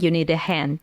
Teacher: So we link those words together with the help of a schwa sound. So article a actually transforms into a schwa sound, need, and we link it to the D sound of the word need in the end, right?